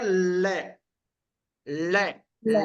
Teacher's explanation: हमारे दोनों पार्श्व से हवा बाहर निकलती है दोनों के दोनों जो पार्श्व है उनसे हमारी हवा बाहर निकलती है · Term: पार्श्विक व्यंजन